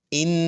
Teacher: یہ جو ان آواز آ رہی ہے ناک سے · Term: غنہ